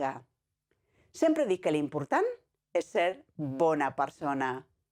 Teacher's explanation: we have to say the first part faster and the second part slower, slowing down the words that are important, “good” and “person”, and pausing after important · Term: vary the speed